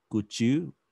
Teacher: baca tulisan cold itu L-nya hilang. O dan L-nya hilang.